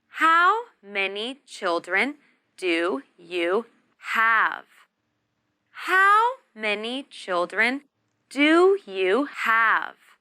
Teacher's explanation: For this question, we stress the words how many, children, and have. And we use the falling tone.